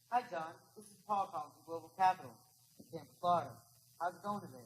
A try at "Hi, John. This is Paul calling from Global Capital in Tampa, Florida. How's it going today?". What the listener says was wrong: You were good up to the point you said Global Capital. You declared. Global Capital, he's like, so the fuck what? That's what when you say Global Capital with a downbeat, mistake.